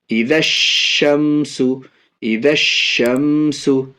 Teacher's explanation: اب یہاں دیکھیے الف اور لام دونوں ہیں، لیکن یہ بڑی شین جو ہے یہ دیکھیے یہاں حروف شمشی میں سے ہے، اس لیے الف اور لام دونوں کو نہیں پڑھیں گے، بعد والے حروف یعنی شین سے ملا کر کے پڑھیں گے